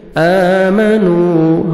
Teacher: آمنوا حمزہ کو مرکھڑا زبر ہے، 1 سیکنڈ حمزہ کو کھینچیں گے، واو مدہ، نون کو 1 سیکنڈ کھینچیں گے